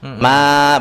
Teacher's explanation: Jadi mat asli panjangnya 2 harakat.